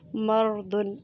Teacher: مرد، اس میں را ساکن سے پہلے حرف پر زبر ہے اس لیے اس را کو بھی پر پڑھا جائے گا